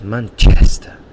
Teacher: he really exaggerates the chest, and that's where the stress is in that word, in that noun.